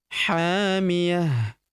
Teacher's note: huruf ha kita panjangkan dua harakat karena terdapat tanda alif di depannya yang ini hamiah ta marbut di ujung berubah menjadi ha sukun